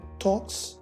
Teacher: If the sound immediately preceding the S is voiceless, in other words, there is no vibration of the vocal cords when we produce that sound, like the K in the word talks, then the S is pronounced as S.